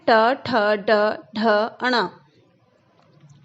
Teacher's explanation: ट वर्ग में ट ठ ड ढ अण, इनका उच्चारण स्थान जो है वो है मूर्धा से